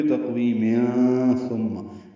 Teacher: ملانے کی صورت میں تقویم ثم، یعنی تنوین کے بعد تھا آنے کی وجہ سے اخفا کرنا ہوگا